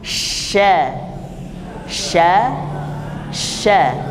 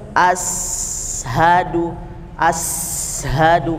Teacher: keluarnya malah dari bibir atau cenderung dari lidah bagian depan seharusnya dia hanya di tengah Syekh sya sya sya sya jadi tidak tidak berubah bentuk mulutnya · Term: Shin